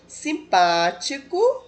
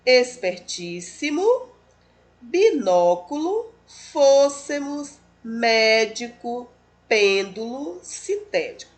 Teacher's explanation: são aquelas em que a sílaba tônica ou seja a sílaba mais forte é a antepenúltima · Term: palavras proparoxítonas